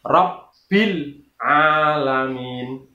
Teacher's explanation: Yang benar adalah alhamdulillahi Rabbil alamin. Rabbi, kata-kata Rabbi itu ada tasdidnya, maka cara membacanya juga sama, yaitu ditekan